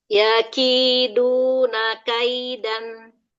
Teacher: Karena ee dia itu panjangnya ya itu madun ma yang mana e dia lebih dari satu harakat namun tidak sampai dua harakat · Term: huruf lin